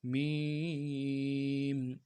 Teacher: اعوذ باللہ من الشیطان الرجیم، بسم اللہ الرحمن الرحیم۔ میم، سب سے پہلے لفظ میم کو 3 الف کی مقدار میں کھینچنا ہے، آخر میں میم ساکن ہے، غنہ کرنا ہے۔